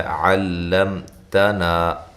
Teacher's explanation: میم کو ہلانا نہیں ہے، اور یہاں میم ساکن کا اظہار ہو رہا ہے۔ تنا، تا باریک، نا الف مدہ۔ · عین کو واضح نکالیں، لام کو باریک کریں، لام کو موٹا نہیں کرنا، میم کو ہلانا نہیں ہے، اور یہاں میم ساکن کا اظہار ہو رہا ہے۔